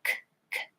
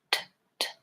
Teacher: Both are voiceless stop sounds, and the K is in the back and the T is in the front.